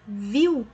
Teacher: Nós temos o I ali como vogal e o U semivogal.